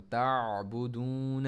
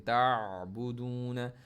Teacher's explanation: आइन को middle throat से बिल्कुल आवाज़ घूमती हुई आवाज़ आ रही है